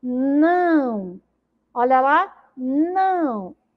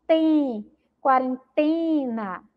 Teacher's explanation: a gente sente o som passando pelo nariz